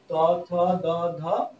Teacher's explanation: এগুলি উচ্চারণ করার সময় জিভ আমাদের দন্তকে স্পর্শ করে, এর জন্য এগুলিকে বলা হয় দন্তীয় ধ্বনি, কিন্তু দন্ত ধ্বনি বলা হয়।